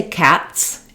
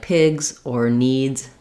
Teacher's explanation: One thing to note, when I'm making that Z sound at the end, it doesn't have to be a strong sound. So when I say cats, this sound is strong. Cats has a forceful S sound with a lot of noise.